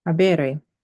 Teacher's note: We have a long E before the RE.